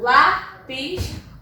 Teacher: o lá é o mais forte, o pis é terminado em is.